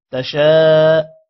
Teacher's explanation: شین کے بعد الف ہے الف پر مد ہے لمبا کریں گے